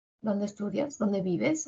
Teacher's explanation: todas estas oraciones interrogativas tienen un tono final descendente